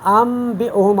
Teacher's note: تو یہاں ہم کیا کرتے ہیں، ہم نون کو ہم نون کو میم میں تبدیل کرتے ہیں، ہم نون کو میم میں تبدیل کر کے پھر با پڑھ کے ہم آگے بڑھتے ہیں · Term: اقلاب